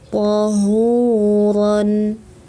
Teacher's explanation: Ha kacamata, ha besar, pangkal tenggorokan